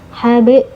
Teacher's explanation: harus dipantulkan tapi ingat pantulannyaah kecil saja ya sambil jalan saja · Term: Qalqalah sugro